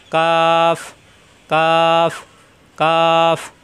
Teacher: জিব্বার গোড়া থেকে একটু আগে বাড়িয়ে উপরে তালুতে চাপ দিয়ে